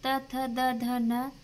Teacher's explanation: त वर्ग में दंत से निकलती है